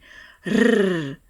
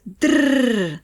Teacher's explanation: Il est produit par la vibration de la pointe de la langue juste derrière les dents du haut. La langue prend la position comme pour le son D, elle est détendue et on souffle vers la pointe de la langue en la faisant vibrer. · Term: roulé